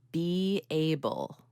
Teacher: inserting a Y at the end of a word that ends with E to connect it to another word that starts with vowel